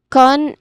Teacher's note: Con, it's soft because there's a schwa sound in there.